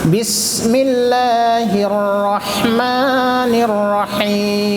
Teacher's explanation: بس چھوٹی سین ہے، سیٹی کے ساتھ نکلے گا